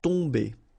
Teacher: Okay, so remember, you've got OM here, but after that you've got a consonant, so it does mean that this combination of OM will give you the sound on. Okay, you don't pronounce the M at all, so it's really a nasal, so it goes in your nose